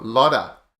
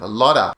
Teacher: he drinks up and the T joins with the o lada the T becomes a D sound · The T becomes a D sound, a lotta. Of becomes an which is a schwa. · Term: D flap